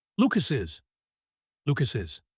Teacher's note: The S connects to the I.